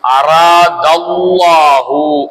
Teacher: அல்லாஹ் என்பதை வாய் நிறைய வல்லினமாக தபகீமுடன் மொழிய வேண்டும்